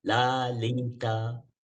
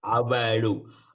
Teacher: We call it as dental law. It's called dental, touches the teeth.